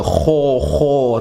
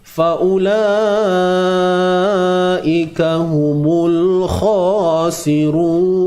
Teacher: So huruf kha ni dia tebal tuan-puan. Huruf kha dia tebal selamanya. Tetapi tidak perlu muncung bibir mulut kita.